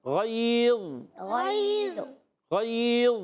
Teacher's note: ضا کو بھی ایکسٹرا موٹا کریں گے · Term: حروف مطبقہ